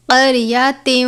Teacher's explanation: موٹے والا قاف ہے، حروف مستعلیہ میں سے پر پڑھتے ہیں ہمیشہ اور ہر حال میں. را ساکن ہے، را کو بھی پر پڑھتے ہیں.